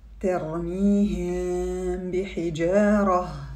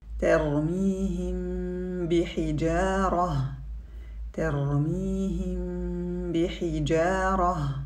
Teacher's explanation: Ce qui caractérise al-irfa est le fait de prononcer la lettre mim d'une façon entre l'idhar ou l'idgham, sans éloignement des lèvres au moment de la prononciation de la lettre mim, ترميهم بحجارة et sans pression sur les lèvres au moment de la prononciation du mim.